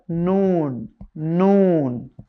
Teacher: জিহবার আগা বরাবর উপরে তালুর সঙ্গে লাগিয়ে